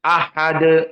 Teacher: di saat kita tawakuf pada Dal Awas perhatikan harus Qalqalah